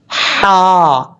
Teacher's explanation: یہ حروف حلقی میں سے ہے، اس حلق کے ساتھ اس کا تعلق ہے،